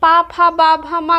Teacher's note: दोनों ओष्ठ परस्पर एक दूसरे को स्पर्श करते हैं, तो इसलिए पा फा बा भा मा का उच्चारण जो होता है वो ओष्ठ से होता है। तो ओष्ठ से उच्चारित होने वाले आपके ये 5 व्यंजन हो जाते हैं।